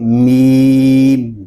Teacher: میم جو ہے یہ دونوں ہونٹوں کے خشک حصے سے ادا ہوتا ہے، اس کو ہم میم یا میم نہیں پڑھیں گے، اس کی آواز ناک میں نہ جائے بلکہ اس کو پڑھیں گے میم، جس طرح انگلش میں ہم پڑھتے ہیں ایم ای می، ساتھ میں ٹرپل ای لگائیں، می، آگے این لگا دیں، میم۔